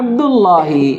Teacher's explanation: dan tebalkanlah lam pada ismullah, ya, pada nama Allah